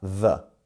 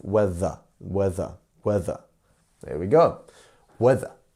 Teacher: Your tongue is vibrating on the top, on the bottom of your teeth, th, and then bouncing off.